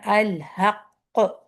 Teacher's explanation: جب آپ اس پہ اگر رکتے ہیں قاف پہ شد کی صورت میں تو کلکلا کا ہائیسٹ لیول ہوتا ہے